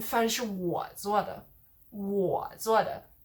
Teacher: Third tone there, so you're stressing the fact that you're the one who did the cooking of the rice or the meal, the food.